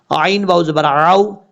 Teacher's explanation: عین کو حمزہ کی آواز میں نہیں پڑھنا ، عین کے بعد جو واو ہے یہ واو مدہ نہیں